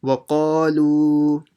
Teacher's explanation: Then the lam will be stretched by the waw saakin because the lam has a dhamma. Lu, and this alif you ignore at the end.